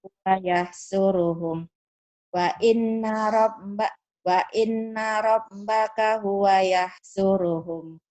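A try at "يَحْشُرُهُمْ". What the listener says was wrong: Ya, tinggal shinnya yahsyuruhum.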